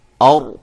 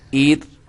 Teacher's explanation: یہ جب میں نے اور کہا تو را کو موٹا کیا، ایر کہا تو را کو باریک کیا، اور کہا تو را کو موٹا کیا۔